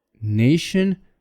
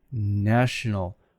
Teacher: Nation becomes national. Notice the long vowel becomes short.